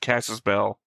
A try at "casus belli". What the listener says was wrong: Casus Bell. That's a belly because that's an I at the end, so. I know, because I've heard it, people say Casus Belli or Casus Belli, so yeah.